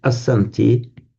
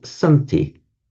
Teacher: You would have expected to see as plus anti. You would have expected to see asanti for the plural, but in fact, what happens, the a drops off. So all you get is santi.